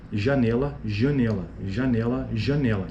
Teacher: a não articulação da vogal nasal marca a variação dialetal e não causa diferença de significado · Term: nasalidade